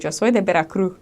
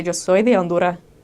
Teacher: they don't say the S on the end of the words, and that is just consistent throughout their speech